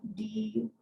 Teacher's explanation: alveolar, when your tongue tip at the alveolar ridge behind your top teeth